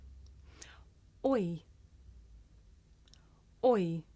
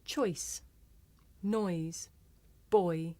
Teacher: this is a diphthong a double vowel sound the shape the mouth makes changes from the beginning of the word to the end